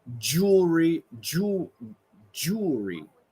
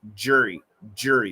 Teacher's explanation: the first one is going to be jew like a long double O and the second one is a schwa R